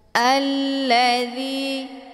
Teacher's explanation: zi dibaca panjang 2 harokah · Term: mad tabi'i zahiri